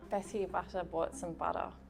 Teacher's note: Butter, okay, she's got flapping. The double T flapped. like Americans do